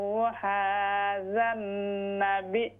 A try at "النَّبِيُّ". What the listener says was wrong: वहादा नबिय्यु, या ठीक करें, या जितनी जगह भी या मुशद्दद आई है आपने उसको सही अदा नहीं किया, इसको दुरुस्त करें, इसकी थोड़ी प्रैक्टिस करें।